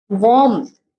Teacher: some speakers add a tiny P sound inside the word warm